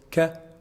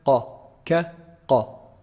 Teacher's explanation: Kaf is pronounced from the back of the tongue, but it's actually closer to the mouth from the qaf articulation point. So the articulation point of the kaf is actually the back of the tongue, but it's closer than the qaf.